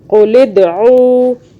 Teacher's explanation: لام دال زیر لد, دال پہ قلقلہ کیا, جھٹکے سے پڑھا. قاف کو قاف پڑھنا ہے, کاف باریک کاف نہیں پڑھنا